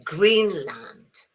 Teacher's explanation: Remember the stress is on green.